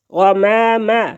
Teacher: غین، حلق کے اوپر والے حصے سے ادا ہوتا ہے